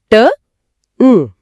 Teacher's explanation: நாவோட நுனி அன்னத்தின் நுனியை பொருந்துவதால பிறக்குது